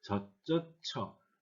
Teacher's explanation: 실제로 발음은 저처 이렇게 단모음으로 발음된다